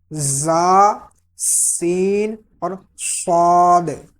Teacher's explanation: ان کو ادا کرتے وقت سیٹی کی آواز نکلتی ہے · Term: حروف صفیریہ